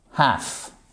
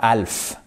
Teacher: le L ne se prononce pas. Oui. Alors, bien évidemment, il faut bien penser au H.